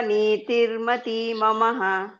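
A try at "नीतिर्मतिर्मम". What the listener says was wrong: ಮತ್ತೆ ಅಲ್ಲಿ ಇದಿದೆಯಲ್ಲ ಮಾತಾಜಿ, ಅರ್ಕವಳಿ ಇದೆಯಲ್ಲ, ಹಾಗಾಗಿ ಮತಿರ್ಮಮ.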